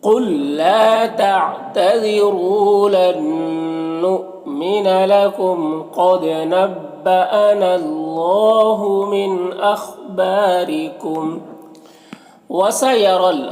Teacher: را کے نیچے زیر ہے، را کو باریک پڑھیں گے